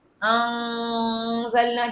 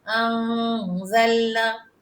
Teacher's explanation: اخفا غنہ، خفیہ خفیہ نون، خفیہ نون نکلے گا ناک سے